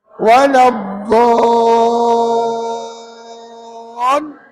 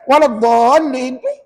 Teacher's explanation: hukum mat lazim kena baca 6 harakat